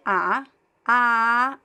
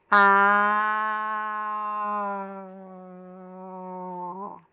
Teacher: the open a is similar to the a like in father a but you have to shape your mouth as an o. So uh to practice you can start with the ah ah and then close shape your mouth a little bit more.